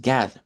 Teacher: en el inglés el sonido de la o es en realidad una una a hacia atrás, ¿verdad? Una open back.